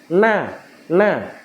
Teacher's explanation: Bunyi huruf nun keluar dari ujung lidah di bawah makhraj huruf lam